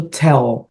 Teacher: pro inglês o l não tem esse som de u que tem no português